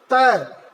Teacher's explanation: त बोलने के लिए आपको आपकी जीभ दांत से जरूर लड़ेगी, तो इसे क्या कहेंगे, दंत।